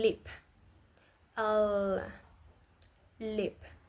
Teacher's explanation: The air flows around the side of the tongue, while the center part makes contact with the roof of the mouth. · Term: Lateral